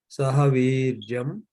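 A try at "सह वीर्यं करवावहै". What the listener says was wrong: Yeah, it's not Sahaviryam. That you have to pronounce not Makara, Kavarga nasal like Shankara.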